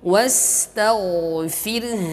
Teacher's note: Ra di sini, ra sukunnya adalah tarqiq tipis